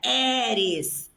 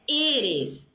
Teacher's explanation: Esse E tem que ser fechado. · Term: E fechado